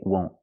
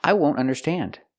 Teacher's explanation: Even before a vowel, we say won't. We use a stop T.